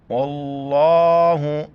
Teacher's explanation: لفظ اللہ سے پہلے واو پر زبر ہے، لفظ اللہ کو موٹا کر کے پڑھیں گے